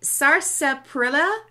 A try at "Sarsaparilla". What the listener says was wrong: Okay, the R is silent. They did something with that spelling.